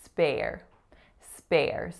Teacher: SP going into that complex R vowel air.